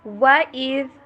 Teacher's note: واو کے اوپر ہونٹوں کو گول کرنا ہے، مکمل ان کو جوڑنا نہیں ہے۔ وَإِذْ ذال کو نرمی سے ادا کیجیے۔